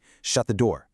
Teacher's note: Notice how our pitch falls at the end of a command or a statement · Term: pitch goes down